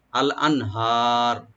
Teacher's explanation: আল আনহার, নুন সাকিন এখানে এজাহার হবে, আনহা টাকা রাইট দিয়ে কালে টানবেন, র এখানে একটু মোটা করে পড়বেন